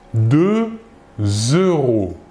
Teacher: nous faisons la liaison entre le X dernière lettre du numéro 2 et le E de euro